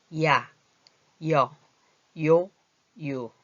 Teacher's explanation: 처음에는 입 모양이 이로 됐다가 나중엔 아로 끝나지요. 이런 거는 이중모음이라 그래요.